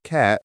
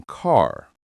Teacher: Cat has a short, open, ah sound. Car has a longer, deeper ah sound.